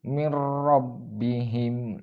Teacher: yang pertama huruf lam di sini terdapat huruf RO di sini seakan-akan terdapat tasydid dan dibaca dengan suara tidak mendengung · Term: idgham bilagunnah